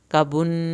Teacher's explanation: کبن نون کی شد پہ دیر لگے گی